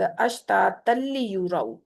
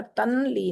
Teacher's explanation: ये इदगाम बिला गुन्ना है, यहाँ पर बगैर गुन्ने के इदगाम होना है। तल्ली होगा यहाँ पर, तनली नहीं होगा।